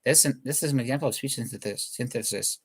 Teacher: You can't say an S that quick after a CH because your tongue is too far away.